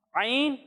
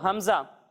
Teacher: جب ہم عین کی ادائیگی کریں گے تو اسے ہم حلق کے درمیانے حصے سے پڑھیں گے، لیکن جب ہم حمزہ کی ادائیگی کریں گے تو اسے ہم حلق کے نچلے حصے سے پڑھیں گے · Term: عین اور حمزہ